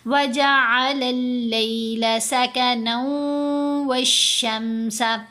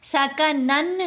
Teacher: وجعل اللیل سکنا والشمس، سکنن نہیں ہم نے پڑھنا، واو مشدد ہے نا، نون کو واو سے ملائیں گے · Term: ادغام